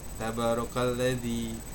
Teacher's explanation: Panjang. 2 harokat. Ya, karena ada fathah diikuti alif. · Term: mad tabi'i